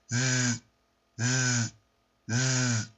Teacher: S 발음처럼 소리를 내는데 성대 울림을 같이 포함을 시켜서 내는 소리가 바로 이 Z 발음이죠